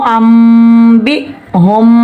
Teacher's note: नून की जगह मीम को गुन्ने से पढ़ेंगे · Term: इकलाब का कायदा